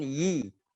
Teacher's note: Ini dia jadinya kebanyakan membaca i, bukan yi.